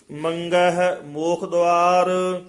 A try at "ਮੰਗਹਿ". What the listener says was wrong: ਮੰਗਹਿ ਗੱਗਾ ਲਾ ਕੇ ਗੰਗਾ ਨਹੀਂ ਲਾਉਣਾ। ਮੰਗਹਿ ਨਹੀਂ ਕਹਿਣਾ, ਮੰਗਹਿ ਮੂਖ ਦੁਆਰ।